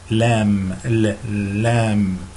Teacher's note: which is the L sound in English, but it's not dark, it's light L